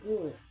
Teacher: G is voiced velar plosive